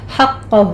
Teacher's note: حقہ میں قاف پر تشدید ہے، سختی کریں گے، قاف کو پر پڑھا جائے گا، ہا کو وسط حلق سے ادا کرنا ہے اور ہو کو اکثر حلق سے ادا کرنا ہے